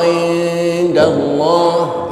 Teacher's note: Namun ikhfanya ikhfa aqrab, suaranya suara n.